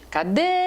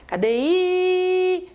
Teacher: eu escuto o E, não escuto o I. O E é forte. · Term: O E é tônico